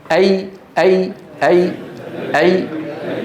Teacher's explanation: تجد كيف ان وسط لسانك يرتفع · الياء تخرج باهتزاز الوترين الصوتيين في الحنجره ويصاحب ذلك انخفاض للفك السفلي وارتفاع لوسط اللسان